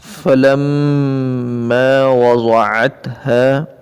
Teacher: میم کے اوپر شد ہے تو یہاں تھوڑا سا رک کر پڑھیں گے. فلما وضعتها، اور زواد کو پر کر کے پڑھیں گے، عین کو درمیان حلق سے ادا کریں گے.